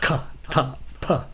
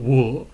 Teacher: There's the stop ending, where you have a sound that just stops, like ka, ta, pa. You notice that the sound just stops. Or you have a live ending, where it kind of persists. The sound persists, like wo.